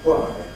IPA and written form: hwaɪ (why)